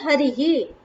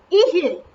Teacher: यहाँ पे विसर्ग का स्थान तालु हो जाएगा।